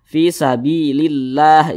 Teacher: lafaz Allah sebelumnya ada tanda baca kasrah nih maka lafaz Allah dibaca tipis